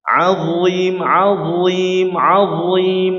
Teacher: ini huruf d keluar dari ujung lidah bertemu dengan ujung gigi seri jadi pertemuan antara ujung dengan ujung ya. Kalau huruf dhad dia di daerah atau di tepidah bertemu dengan geraham atas ya.